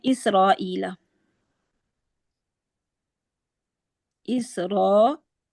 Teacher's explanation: इसकी और मिसाल हम देख लेते हैं, इसराईला, इसराईला, इसमें अब क्या हो रहा है, ई ये मद्दे बदल है, ठीक है, हरफ मद्दा से पहले हमजा आ गया, इसको अगर हम वसलन पढ़ते हैं तो इसराईला 2 काउंट्स पढ़ा हमने मद्दे बदल को, लेकिन जब हम वक्फ करेंगे तो क्या बन जाएगा, ये उसी तरह सेम इसराईल मद्दे आरिल सुकून बन जाएगी।